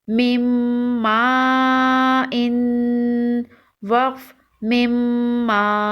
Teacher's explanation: میم مشدد ہے، میم مشدد کو غنہ کے ساتھ پڑھتے ہیں۔